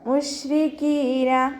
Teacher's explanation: റോ കെസ്റ ആയതുകൊണ്ട് നമ്മൾ താഴ്ത്തി ഉച്ചരിക്കും.